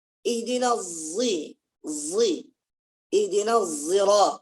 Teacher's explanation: Musyammas itu sad yang bercampur dengan zai.